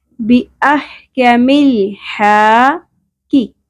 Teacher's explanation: کاف سنگل زیر شارٹ پڑھیں گے اور باریک پڑھیں گے، قاف کی طرح نہیں ادا کرنا.